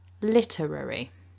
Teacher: First of all, what we can see is that the word is broken down into 4 syllables, 4 chunks, and that the stress is at the beginning of the word, on the first syllable, literary. So we start with that L sound.